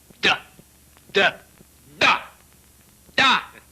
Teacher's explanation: Sans doute, la consonne D, par exemple, se prononce en donnant du bout de la langue au-dessus des dents d'en haut.